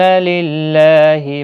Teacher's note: اللہ کا لام زیر کی وجہ سے باریک پڑھا جائے گا، اس کے اوپر کھڑی زبر بھی ہے، 1 الف کی مقدار کے برابر کھینچ کر بھی پڑھیں گے۔